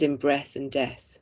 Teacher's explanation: full rhyme here where the vowel sound and end consonants are the same but the initial consonants are different